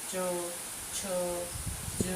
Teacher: તો એ તાલવ્ય વ્યંજન. તમે જોશો કે આપણી જીભ તાળવાને અડે છે, તેથી તે તાલવ્ય વ્યંજન છે.